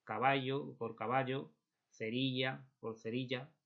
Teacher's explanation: el yeismo que es no diferenciar la y de la elle